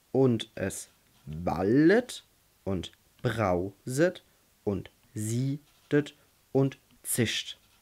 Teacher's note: Wenn wir uns das dann als kleine und große X vorstellen, das heißt, das kleine X ist nicht betont, das große X ist betont, zwei unbetonte Silben und eine betonte Silbe. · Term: anapest, Anapest